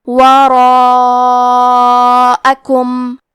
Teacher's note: یہ مد واجب متصل ہے، مد واجب متصل کا معنی ہے کہ حرف المد اور اس کی وجہ جو کہ حمزہ ہے دونوں ایک ہی کلمہ میں ہوں۔ اس مد میں ہم اپنی آواز 4 مد کے برابر لمبی کریں گے